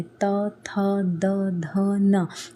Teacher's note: इसमें बोलोगे तो आपकी जीभ किसको टच करती है? आपके दांत को टच करती है ना?